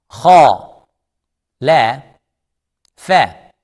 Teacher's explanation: Kha is heavy, lam is light, soft, smile. Fa is soft, smile.